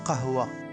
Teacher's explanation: C'est un K prononcé très profondément dans la gorge, presque comme un G dur. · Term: le son qa